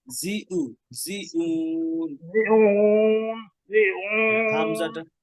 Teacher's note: হামজাটা যেন শক্ত হয়, হ্যাঁ ক্লিয়ার হয় গলার শুরু থেকে বা গলার শেষ থেকে যেটা বলেন